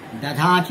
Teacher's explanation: जैसे संस्कृत के दा धातु से दधात धधात के स्थान पर दधात का प्रयोग होता है, ध महाप्राण है अतः उसका प्रथम अल्प प्राण होकर द हो जाता है और दधात रूप होता है।